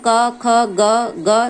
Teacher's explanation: जैसे क वर्ग में क, ख, ग, घ अंग है, तो ये कंठ को स्पर्श करती है। जब हम बोल रहे हैं व्यंजन क, ख, ग, घ, तो ये हमारे ध्वनियां कंठ से निकल रही है, अर्थात ये कंठ को स्पर्श करती है।